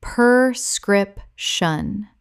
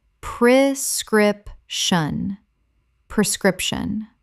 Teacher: The first syllable is pre, not per, a very common confusion.